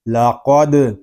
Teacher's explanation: دال ساکن میں کلکلہ خوب ظاہر کریں گے کیونکہ دال حروف کلکلہ میں سے ہے، اور جب حروف کلکلہ ساکن ہوں تو ان میں کلکلہ خوب ظاہر ہوگا.